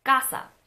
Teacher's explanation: The word casa, which means house in both Spanish and Italian, are not as aspirated as the K's in American English.